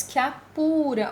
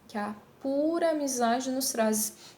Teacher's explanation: a última vogal da primeira palavra ela é pronunciada de maneira mais fraca e a primeira vogal da próxima palavra é pronunciada com mais força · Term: sinalefa